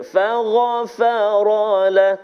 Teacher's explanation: faghfara tebal pada ghain, fagha, kemudian ra tebal baris atas, faghfara.